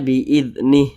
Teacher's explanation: huruf h huruf Ha ini dia memiliki Mad Silah qasirah tapi kalau kita berwaakaf tepat di huruf H maka Mad Silah qasirahnya dia tidak dibaca panjang sehingganya ini kita huruf Ha ini kita sukunkan Nah karena dia